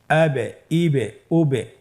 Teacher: উচ্চারণের সময় একটু ধাক্কা দিয়ে উচ্চারণ করলেই কলকালা হয়ে যাবে · এই যে আমরা হরফের শেষের দিকে একটা সাউন্ড করছি, এটা একটা প্রতিধ্বনি হচ্ছে, একটা ডাবল সাউন্ড হচ্ছে, এটাই কলকলা।